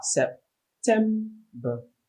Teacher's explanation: The stress is on the second syllable, tem.